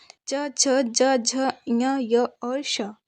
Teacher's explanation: फिर तालव्य जो तालु से निकलती हैं ध्वनियाँ